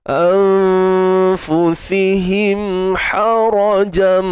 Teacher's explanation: Hara, ra tebal, ha pedas, ha sempitkan tengah kerongkong kita.